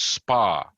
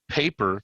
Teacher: So, the p in spa is not aspirated. The p in paper is aspirated, the first p.